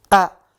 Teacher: kalau hamzah atau A, dia tidak ada hambatan lubang hidung mau ditutup ataupun dibuka.